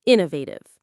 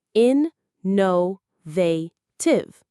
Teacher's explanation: For this word, the stress is right at the beginning, on in, innovative.